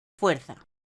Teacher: hay 2 vocales, U y E, primero una cerrada y luego una abierta. Decimos que esto es un diptongo creciente.